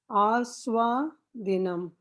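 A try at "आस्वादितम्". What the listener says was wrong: Dinam. Where is dinam? Aswaditam. Aswaditam.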